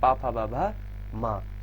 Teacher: अगर हम बात करें पा वर्ग की तो पा वर्ग हमारा कहाँ से आता है, पूरा का पूरा ओष्ठ से आता है